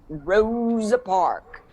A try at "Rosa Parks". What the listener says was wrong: It's Rosa Parks. Parks. With an S.